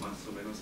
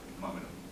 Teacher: la elisión de la S final en Chile es muy común